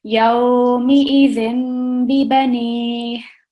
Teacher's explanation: we're not going to make the noon sound, which comes from the tanveen. We're going to change it, replace it with a meme sound. So when we join it, it will be yawmi-idhin bibani.